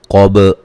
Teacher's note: قاف کو موٹا ادا کریں گے، با پہ قلقلہ کریں گے